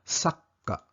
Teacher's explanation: Ang spelling ay sa, ka, at sa gitna ay maliit na tsu na ibig sabihin dodoblihin ang pagbigkas ng K sound ng ka, kaya sakka. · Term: double K sound